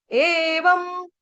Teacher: उसके ऊपर जो अनुस्वार उसका उच्चारण करेंगे आधे म से